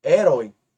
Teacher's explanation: Observe que a última sílaba é tônica é um oxítona e ela tem um ditongo ditongo aberto ó oi aberto Herói por isso